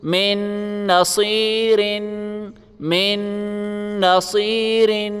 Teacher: اب اگلا حرف دیکھیں، سب سے پہلے میم ہے، میم کو ہم ڈائریکٹ اس نون کے ساتھ ملائیں گے، یہ نون نہیں پڑھا جائے گا، اوپر بتا چکے ہیں۔ میم کو نون کے ساتھ ملائیں اور غنہ کریں